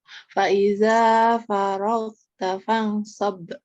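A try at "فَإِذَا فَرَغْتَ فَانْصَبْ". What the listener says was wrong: Untuk ikhfanya boleh diperlama sedikit nggak, Tanteku? Faiza faragta fansab. Kalau di Aki diringangi, jadi di Tante diberatin jadinya. Nah, seperti itu kaidahnya.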